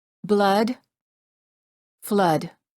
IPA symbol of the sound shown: ə